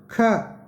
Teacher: ख इसको बोलेंगे, मुंह ज़्यादा खुलेगा, श्वास का ज़्यादा प्रयोग होगा और यह गूंजेगा नहीं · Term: अघोष